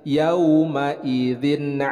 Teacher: tanwin bertemu dengan Ain hukum bacaannya adalah izhar dibacanya jelas